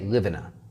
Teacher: we're connecting live 'V' to 'IN'